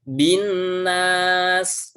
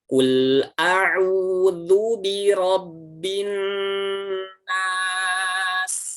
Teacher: Yang pertama dia tidak gunnah, tidak masuk ke hidung, dan yang kedua dia tidak ditahan sebanyak 2 harokat. Harusnya masuk ke hidung dengan sempurna dan ditahan 2 harokat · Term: gunnah musyaddadah